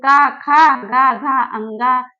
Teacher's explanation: तो इन वर्णों का उच्चारण स्थान क्या है, कंठ है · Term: का वर्ग